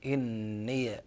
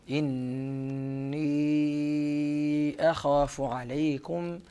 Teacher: نافعا قرأ بفتح ياء الإضافة هنا إني هكذا بفتح الياء، أما حفص فإنه قرأ بإسكانها